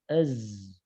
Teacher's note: Huruf zai-nya makhrajnya terdengar betul ya. Az, fokus ke ujung lidah, betul.